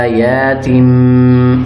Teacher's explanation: تو اس نون کو ہم نے تین نہیں پڑھا، اس کو ہم نے میم میں بدل دیا · غنہ ایک الف کے برابر ہجے کے اندر ہی کرنا ہے، جب ہجے اس کا کرنا ہے تب غنہ لازمی کرنا ہے۔